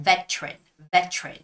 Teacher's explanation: when you read it in a British English way it's more like veteran veteran so you make that hard T sound